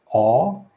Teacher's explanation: jaw all the way down aw and we're making a round making a round wide round mouth a circular uh lip position